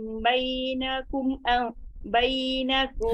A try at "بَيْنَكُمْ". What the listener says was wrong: Ha, kum, kum tu jangan laju. Bainakum relax je. Jangan lompat